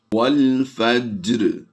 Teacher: ہم نے یہاں پر جیم پر قلقلہ صغریٰ کرنا ہے